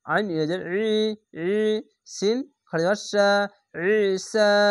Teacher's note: জেরের পাশে ইয়া সাকিন এক আলিফ টেনে পড়বেন, খাড়া জবর এক আলিফ টেনে পড়বেন। আইনটিকে মোটা করে গলা চিপে পড়বেন।